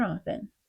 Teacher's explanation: often became often with a silent T